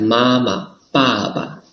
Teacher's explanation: there is a neutral tone in these words